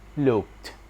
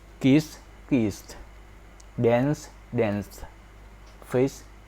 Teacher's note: for the verb ended with voiceless consonant, the ed endings will be sounded like t